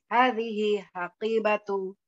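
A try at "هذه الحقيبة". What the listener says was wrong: Biar terasa lamnya hazihil.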